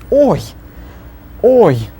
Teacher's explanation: it's that brief, fleeting Y at the end that we're working on. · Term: I kratkaya